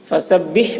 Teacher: فسبح میں ہا کو حلق سے ادا کریں گے.